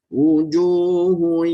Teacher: rasa tengah lidah itu diangkat ke langit-langit atas dengan ditahan dengungnya, ya, 2 harakat.